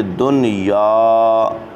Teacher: ایک کلمے میں یرملون آنے کی وجہ سے یہاں پر غنہ نہیں بلکہ اظہار کیا جائے گا، اظہار مطلق کیا جائے گا۔